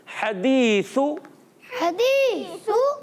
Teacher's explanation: ये तीन हुरूफ सा ज़ाल वा एक ही जगह से अदा होते हैं, ज़बान का किनारा, ज़बान की नोक या सिरा और ऊपर के दांतों के अंदरूनी किनारों से।